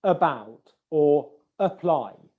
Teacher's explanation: the schwa sound comes from the very center of the mouth. It's a very relaxed sound, and it's like we're just making noise.